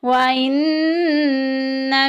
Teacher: नून मुशद्दिद आ गई, गुन्ना करेंगे, नाक में आवाज़ लेके जाएंगे